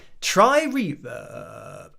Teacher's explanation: the guy always goes into vocal fry at the end of his sentences